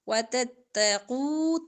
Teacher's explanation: تا باریک، قوف موٹا پڑا جائے گا